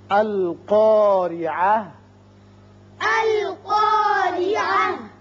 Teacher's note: را کے نیچے زیر ہے، را باریک ہوگا. یہاں جب وقف کریں گے تو تا ساکن ہو کر ہا بن جائے گا